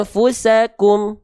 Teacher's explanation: dibacanya dengan menyamarkan bunyian disertai dengan dengung dua harakat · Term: ikhfa hakiki